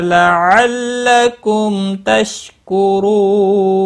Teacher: لعلکم، تشدید والے حرف کو تھوڑا سختی کے ساتھ پڑھیں تاکہ تشدید ظاہر ہو۔ میم ساکن کے بعد تا آیا ہے، اظہار شفوی ہوگا، غنہ نہیں کریں گے۔ تشکرو، رو واو مدہ ہے، ایک الف کے برابر کھینچ کر پڑھیں گے اور را کو پیش کی وجہ سے پر پڑھیں گے۔ · اور وقف کی صورت میں نون ساکن پڑھا جائے گا، وقف بالاسکان ہوگا، مد العارض وقفی ہوگا، 3 سے 5 الف کے برابر کھینچ کر وقف کریں گے۔